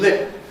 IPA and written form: lɪp̚ (lip)